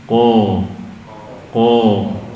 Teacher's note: Isti'la terangkatnya suara, yakni dengan terangkatnya pangkal lidah kita. Jadi suaranya naik ke bagian atas mulut. Jadi tebal, ko.